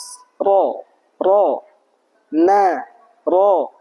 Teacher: huruf nun dan ro itu makhrajnya ujung lidah menempel ke gusi atas